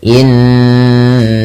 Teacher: Cara membacanya menahan bunyi suaranya sepanjang dua harakat. Innaka. Tidak hanya sekedar innaka tapi ditahan. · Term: gunah